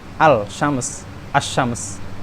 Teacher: itu terdengar bagi siapapun atau bagi yang mendengar kalimat tersebut itu ada idgham di situ dengan shin